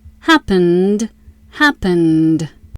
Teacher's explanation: Happen ends with n. N is voiced. Ed says d. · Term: final d sound